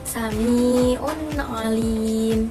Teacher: di mana terdapat tanwin dhamma bertemu dengan huruf ain, maka harus dibaca idhar atau jelas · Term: idhar halqi